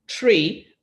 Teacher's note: the student was saying tree for 3, and the TH sound, in fact, does not exist in Creole